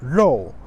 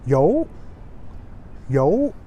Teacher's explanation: especially people from Shandong Ren, they will pronounce yo, yo, instead of rou